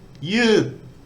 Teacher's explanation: I need to try and put some energy into the beginning and let it tail off. So you, which means to stretch something. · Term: falling tone